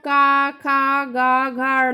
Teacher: जो हमारा फोर्स लगता है वो हमारे कंठ पर लगता है